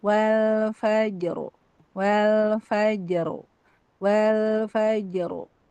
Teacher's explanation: Jadi faj kayak tipis dulu baru ro tebal.